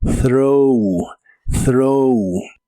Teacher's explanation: La th del inicio se pronuncia como soplando entre la punta de tu lengua y tus dientes de arriba y debe sonar como throw.